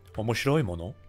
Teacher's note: she just kind of had a rising intonation that made it a question.